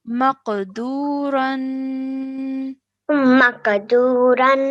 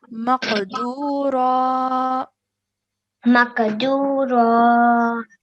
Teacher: the fatha with alif will be pronounced in place of the tanween